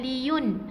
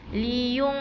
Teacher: Jadi kita baca dengan sengau. Naik ke hidung